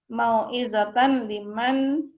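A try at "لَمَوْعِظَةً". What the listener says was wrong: La mau'izatan. Itu ada lamanya kan? La mau'izatan.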